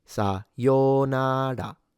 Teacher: sa starts low, yo-na stay high, ra is when you have the drop in pitch